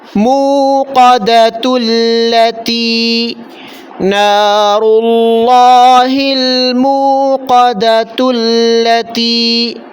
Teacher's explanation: یہاں پر بھی دیکھیں تا پر صرف پیش ہے، دو زبر دو زیر دو پیش نہیں، تنوین نہیں ہے، اس لیے تا کو بغیر نون کے اضافے کے ساتھ لام کے ساتھ ملا لیا